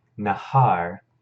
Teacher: This is nahar with a hey, and the hey is verbalized here as well.